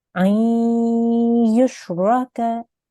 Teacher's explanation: So here, again, we have a nun sakin. So we assimilate and we make a nasal sound.